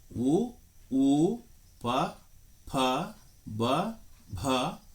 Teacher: ಓಷ್ಠ ಎಂದರೆ ತುಟಿ ತುಟಿಗಳ ಸಹಾಯದಿಂದ ಉತ್ಪತ್ತಿಯಾಗುವ ವರ್ಣಗಳನ್ನು ಓಷ್ಠೆಯ ವರ್ಣಗಳು ಎನ್ನುವರು